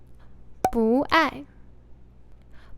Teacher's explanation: Bu is originally in the fourth tone, But when it goes before another 4th-tone character Bu becomes 2nd tone.